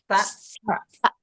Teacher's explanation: Dengan mengeluarkan sedikit ujung lidah, ya sekitar 1-2 mili lah, dan menyentuhkannya ke ujung gigi seri atas sambil menghembuskan suara sa.